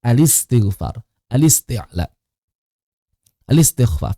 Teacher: Hamzah wasal di sini tidak dibunyikan harokatnya, tapi harokatnya yang bunyi adalah harokat lam.